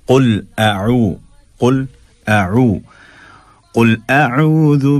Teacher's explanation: क़ुल काफ का ख्याल रखिए, और अऊ में हमज़ा और ऐन का जो फ़र्क है उसको वाज़े रखिए